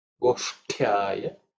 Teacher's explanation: And the ta is the second ta in the ta varga, so it has to be aspirated. But the position of the tongue would be same for ush and ut.